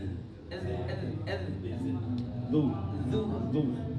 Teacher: zu zal itu ujung lidah nempel ke ujung gigi.